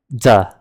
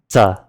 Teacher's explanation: if we unaspirate the T, we get duh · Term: unaspirated counterpart